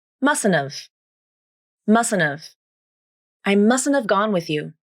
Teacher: First, you drop the H in have and reduce the vowel to the schwa. Then, you also drop the second T sound because this phrase follows the rules of the nasal flap.